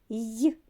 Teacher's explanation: він який так приголосний і завжди м'який